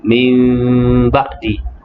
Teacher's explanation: Sebelum ini telah pun kita nyatakan bagaimana cara membaca iqlab yang tepat, iaitulah bibir, 2 bibir kita itu tidak rapat